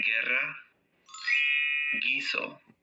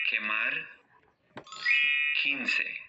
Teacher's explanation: The U becomes silent whenever it is between a G and an E, or a G and an I.